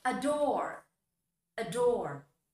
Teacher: The last sound is R, that's R, the sound of R, another voiced sound.